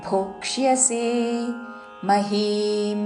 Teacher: క కి ముర్ధన్యషవత్తు యవత్తు మూడు చక్కగా వినపడాలి